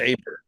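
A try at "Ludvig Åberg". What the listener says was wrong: it's pronounced Oberg. It's an A with a little O on top. Oberg.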